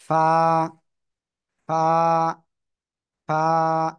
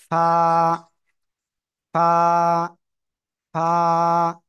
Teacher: নিচের ঠোঁটের পেট উপরে দুই দাঁতের আগার সাথে লাগিয়ে উচ্চারণ করতে হবে